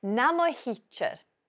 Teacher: the pronoun mo lenites, softens the next word. So teacher becomes hichir.